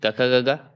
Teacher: ग, क, ख जितने भी कवर्ग हैं वो कंठ से हैं।